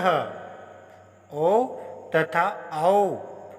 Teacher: ओ तथा औ का उच्चारण स्थान कंठ ओष्ठ है। इन वर्णों का उच्चारण कंठ तथा ओष्ठ से किया जाता है, इसलिए इन्हें कंठोष्ठी कहा जाता है।